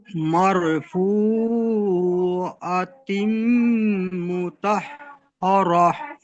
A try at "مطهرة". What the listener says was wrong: এখানে মুতহ, তটি, ত হাসাবা ত, এই হাটি বড় হার মতো উচ্চারণ হয়ে যাচ্ছে। বড় হা, যে জিমের পরে যে হা, ওই হাটি গলার বীজখান থেকে কণ্ঠনালীর মাঝখান হয়তো উচ্চারিত হয়, আপনাদের মাখরাজ পড়ানো হয়েছে।